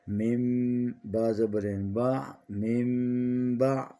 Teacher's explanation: نون ساکن کے بعد با آ جائے تو اقلاب کرتے ہیں، میم آتی ہے چھوٹی سی، میم کی آواز آنی چاہیے۔